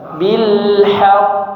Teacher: Huruf qaf di situ ada tasdid ya. Ditahan sebentar. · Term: tasydid